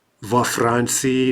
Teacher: Note there the mobile vowel coming in because we have a FR cluster.